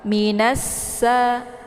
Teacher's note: Cara bacanya itu yaitu ditekan nunnya langsung dileburkan suaranya ke dalam huruf sa, atau alif lam asyamsiyah ini juga biasa disebut dengan idgham syamsiyah karena sifatnya memasukkan, ya. Nunnya dimasukkan ke dalam sa, ditekan, kemudian langsung dileburkan suaranya ke dalam huruf sa. Minasa, ya, ini alif lamnya tidak dibaca, ya, karena sudah ditasydidkan ke dalam huruf sa, ya.